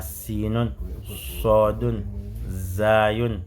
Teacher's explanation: Extrémité de la langue avec la base de la face interne des incisives inférieures. Quand tu dis sodun, sinun, zayun, la base des incisives inférieures veut dire la partie qui est en bas.